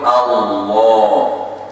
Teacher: Lam jalalah lam fathah la, tapi bunyinya lam fathah lo. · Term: tafkhim lam jalalah